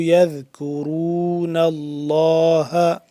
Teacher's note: لفظ اللہ کو پر کر کے پڑھیں گے، کیونکہ اس سے پہلے یہ نون کے اوپر زبر ہے، زبر ہونے کی وجہ سے لفظ اللہ پر پڑھا جائے گا۔